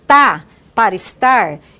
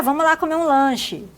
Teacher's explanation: R apagado no final dos verbos